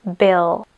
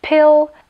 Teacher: jediným rozdielom je že pri B používame hlasivky No a pri p už hlasivky nepoužívame